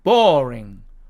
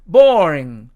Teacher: R 앞에 어가 하나가 추가가 됐죠